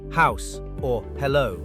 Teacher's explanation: Finally, we have h, the only aspirated throat sound. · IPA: [h]